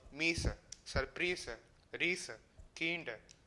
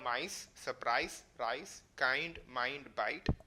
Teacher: the long vowel e became an i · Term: great vowel shift